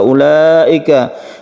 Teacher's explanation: wajib artinya harus harus kita panjangkan sampai 5 harokat atau sama dengan dua setengah Alif kemudian Mengapa dia itu disebut wajib atau diwajibkan panjang Karena muttasil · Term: mad wajib muttasil